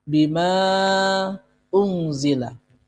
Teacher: Panjangnya sama antara 4 sampai dengan 6 ketukan. Tergantung selera dan kekuatan nafas kita. Unzilah ada nun sukun bertemu dengan za. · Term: mad jaiz munfasil